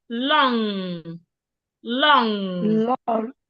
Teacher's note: When we have N and G in a word, we do not pronounce the G sound. So we don't say long.